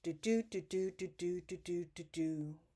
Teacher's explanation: there's 10 syllables per line, and there's an alternating unstressed, stressed syllable pattern. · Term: iambic pentameter